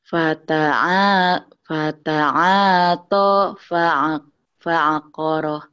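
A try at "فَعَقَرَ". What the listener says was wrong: Fata'ata fa'aqara. Jangan fa'aqara. Dihentikan jadi fa'aqar.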